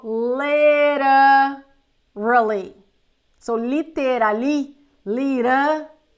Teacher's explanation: The T is gonna turn into an R.